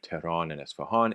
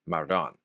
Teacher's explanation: AAn turns to un in words like Tehran and Esfahan